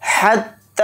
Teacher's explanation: ہا کو اچھے سے حلق سے نکال کر ادا کرنا، ہا کو تا میں ملا دینا ہے، تا پر تشدید ہونے کی وجہ سے ہا ملے گا۔